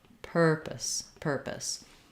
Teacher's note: it doesn't follow our typical rule for a silent e at the end it has a schwa pus um or you might say it with an i sound · lots of length on per very short on the second syllable